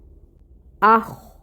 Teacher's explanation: خو کو پر پڑھنا ہے، حروف مستعلیہ میں سے ہے